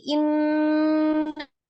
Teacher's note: ghunnah artinya ditekan, ditahan sampai 2 sampai 3 harakat dan suaranya dimasukkan ke al-khaisum ya, rongga hidung